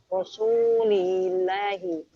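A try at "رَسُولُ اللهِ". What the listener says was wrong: Bukan rasuli tapi rasulu. Kan tidak ada yang mempengaruhi sebelumnya Om. Tidak ada yang mempengaruhi menjadikan kasroh, maka tetap dhammah Rasulullahi. Lalu Rasulu ini sebagai mudhaf, makanya tidak tanwin dan tidak ada alnya.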